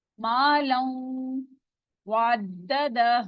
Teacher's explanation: लाम जो है तनवीन है वो आगे मिल रहा है वाव के साथ, तो यहाँ पे गुन्ना भी हो रहा है और वाव के साथ मर्ज भी हो रहा है